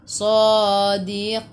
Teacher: Matikan dengan huruf nun, hujung lidah menyentuh gusi atas.